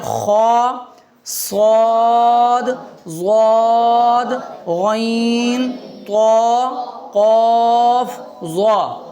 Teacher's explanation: 7 حروف ایسے ہیں جن کو موٹا کر کے پڑھا جاتا ہے، پر کر کے پڑھا جاتا ہے